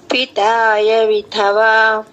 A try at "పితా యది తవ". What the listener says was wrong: యది తవ యయా రెండు పెడుతున్నారు ఎందుకు? పితా యది తవ